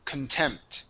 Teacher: The word is contempt. So when we have a word where the stress is not at the beginning of it with the con, we say kun instead of con.